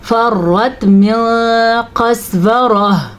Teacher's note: پھر سے را کو پر پڑھنا ہے اور موٹے قاف کا خاص دھیان رکھنا ہے